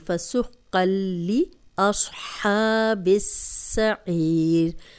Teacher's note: تنوین کے بعد لام آ گیا، یہاں ہم غنہ نہیں کریں گے. شد آ گئی ہے، لام پہ شد ہے، ہم غنہ نہیں کریں گے. · صوت کو موٹا پڑھیں گے. ہا کی زبر کھڑی زبر ہے، اس کو 2 حرکات لمبا کریں گے. ہا کی پریکٹس کریں، ہا نہیں بنا دینا 2 آنکھوں والا ورنہ ترجمہ بدل جائے گا.